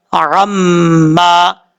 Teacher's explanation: میم کے اوپر شد ہے غنہ کریں گے ایک الف کی مقدار. عین کا آپ نے خاص خیال رکھنا ہے، عین کو حمزہ کی آواز نہیں پڑھنی.